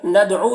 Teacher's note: تعالوا عین کو حلق سے ادا کریں گے، ندعو دال میں قلقلہ کریں گے، دال حروف قلقلہ میں سے ہے